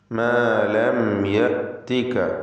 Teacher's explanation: സാക്കിനത്തെ മീമിനെ ഇൽഹാർ ഷഫവി നൽകി മണിക്കാതെ വെളിവാക്കണം